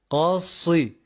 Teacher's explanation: harf kalın ı ile uzayıp i ile bitireceğiz kalınlığından hafiften inceye doğru tam böyle ı sesi vermeyeceğiz tam olarak